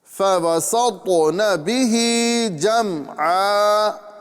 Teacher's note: سین کو باریک اور طا کو پر یعنی موٹا کرنا ہے